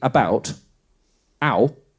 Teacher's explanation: it's two sounds, right? It's ah and then ooh. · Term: diphthong